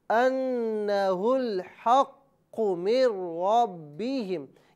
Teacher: یہاں را پر زبر ہے لہٰذا اس را کو پر پڑھا جائے گا۔ · اس کے بعد یہاں با ہے، با جو ہے یہ حرف قلقلہ ہے لہٰذا مشدد ہے۔ حرف قلقلہ جب مشدد ہو تو وہاں جماؤ میں تھوڑی سی زیادتی کی جاتی ہے۔